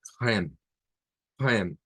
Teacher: Nótese que va la K, la R gutural, la E del español y la M al final. La E no suena en este caso al final, no tiene sonido.